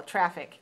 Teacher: Traffic has two syllables, and it's stressed on the first syllable, traffic. This is a noun that means the movement of cars and trucks and other vehicles along the road in a particular area.